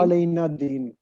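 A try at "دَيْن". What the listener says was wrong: दैन, दैन, दीन नहीं, दैन,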